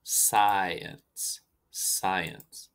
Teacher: here we have a long I, as in sci, science, and combined with an eh, as in energy.